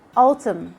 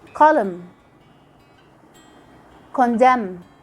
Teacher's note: Like when you say autumn. You only stop at the sound of the M. We just ignore the N.